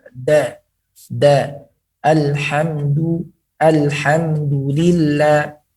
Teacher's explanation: Maka huruf dal keluarnya daripada ujung lidah menempel kepada gigi.